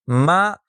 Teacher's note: اب اگر ہم اسی آواز کو متحرک حالت میں رکھیں، مثال کے طور پر فتحہ لگا کر، تو یہ آواز دو اعضاء کے الگ ہونے سے پیدا ہوگی۔ چنانچہ جب ہم ما کہتے ہیں تو دونوں ہونٹ منہ کھولنے کے ساتھ ایک دوسرے سے الگ ہو جاتے ہیں